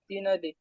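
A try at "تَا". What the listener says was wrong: না, এটা একালিপ টান দিয়ে পড়তে হবে। তা।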